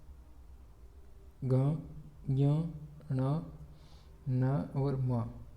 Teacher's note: इनका उच्चारण नासिका के साथ क्रमशः कंठ, तालु, मूर्धा तथा दांत और ओष्ठ के स्पर्श से होता है तथा इन्हें नासिकीय व्यंजन कहते हैं।